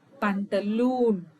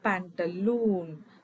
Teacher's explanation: Only the oo sound here is prolonged. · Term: long vowel